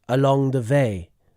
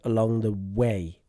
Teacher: So, another thing I'll talk about with this speaker, and this is a common thing with people from the country where this person is from. And the first one is saying v instead of w.